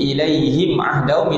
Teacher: Tapi kita kena jelas huruf mim mati ni dia memang ada bunyi menghidung sedikit. Yang dimaksudkan dengan tidak ada dengung maknanya tidak dipanjangkan dua harakat di hidung.